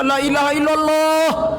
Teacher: alif lam yang ditebalkan pada lafaz Allah karena sebelumnya terdapat huruf berbaris di atas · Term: tafkhim